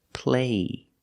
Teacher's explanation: There's no stop T, so the vowel is longer here.